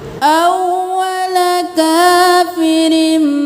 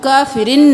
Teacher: अव्वल काफिरिम, अलिफ मद्दा, काफिरिम, अव्वल काफिरिम اب کافرن نہیں کرنا، میم میں تبدیل کر دینا ہے تنوین کو ، کافرن بھی بھی پڑھ سکتے ہیں، وقف بھی کر سکتے